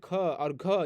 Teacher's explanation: और ये महाप्राणी जो है, जैसे ख और घ, ये बोलने में ज़्यादा हवा निकलता है।